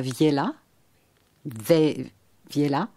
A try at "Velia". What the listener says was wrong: C'est un E. Velia.